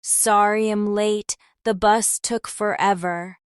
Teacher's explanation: The I'm and late connect so smoothly you almost miss the I.